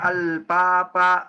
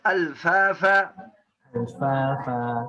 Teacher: Ada orang bacanya al-papa. Ini salah papa. Harus keluar nafas. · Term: harful fa